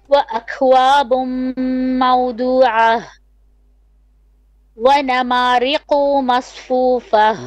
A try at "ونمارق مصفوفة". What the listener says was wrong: ونمارق short vowel. You're stretching the qaf, you're saying قو. ونمارق.